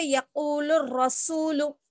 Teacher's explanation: اب یہاں پہ یقول الرسول, یقول الرسول میں بھی کیا ہے, الف اور لام ہے نا, بیچ میں لام سے سیدھا ہم را کو بھی ملائیں گے. یہ تشدید والا بھی حرف ہے, یعنی جس حرف پر تشدید ہو تو اس کو کیا کرتے ہیں, ہم پچھلے والے حرف سے ملا کر پڑھیں گے.